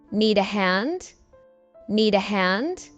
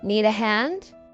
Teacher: But notice you do the rising intonation to make it sound like a question.